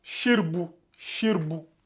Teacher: le a du R disparaît donc il reste shirbou